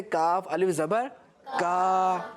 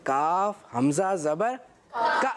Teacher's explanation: اب آپ نے اس کو کھینچنا نہیں ہے بلکہ جھٹکا دینا ہے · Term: حمزہ ساکینہ